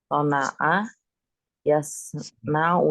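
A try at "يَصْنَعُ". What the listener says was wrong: Sana'a yasna'u. Fi'il mudhari'nya di fathain fi'ilnya kan? Bukan yasni'u, yasna'u dia.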